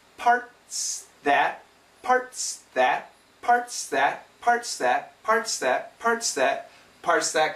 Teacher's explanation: if we have a strong sound like the S and it's next to weak sounds like the T and the th these sounds can be cancelled or at least very weak so parts that the quicker we say it parts that parts